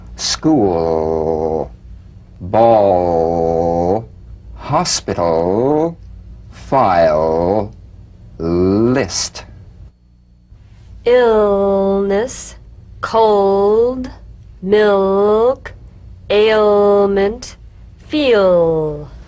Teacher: you feel a vowel-like resonance only impeded by the tongue position